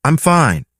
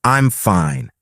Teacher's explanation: Imagine you're saying, "I'm fine." But with a flat tone, it sounds serious, maybe even a little unfriendly. But if you add a little rise and fall, I'm fine. It suddenly sounds warm and welcoming.